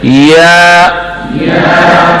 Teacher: जबान का दरमियान ऊपर के तालु से लग जाए